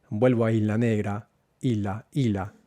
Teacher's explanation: Entonces la S no se aspira, se pierde y termina como isla.